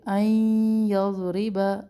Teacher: نون ساکن کے بعد یا ہے، یہاں پر ادغام ہم کر رہے ہیں، ایک الف کے برابر ٹھہرے